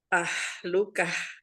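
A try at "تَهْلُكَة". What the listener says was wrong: Masih itu, masih tengah, kayak masih yang tengah gitu. Kalau yang tengah itu kan memang khas dia. Makanya sering disebutnya H pedas karena kan tah gitu seperti di lafaz basmalah ar-Rahmanir-Rahim. Roh. Nah, itu dia H kecil itu. Itu H kecil.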